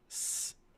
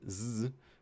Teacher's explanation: So with s, there's no vibrations, but with z, there are vibrations.